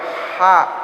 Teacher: Jadi ha itu kalau kita sebut ha, ada udara yang mengikutinya, nafas. Nafas kita nih udaranya keluar.